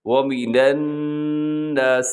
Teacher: یہاں نون مشدد ہے، یعنی نون کے اوپر شد آپ کو نظر آ رہا ہے الناسی میں، تو آپ نے یہاں غنہ کرنا ہے